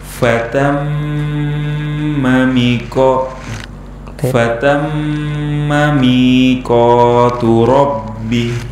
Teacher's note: mimnya harus kita pendekkan, tapi harus kita dengungkan